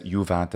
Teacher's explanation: He makes a long u for the juvat. It is a short vowel, technically, but again, medieval speakers do all kinds of changes to the vowel lengths.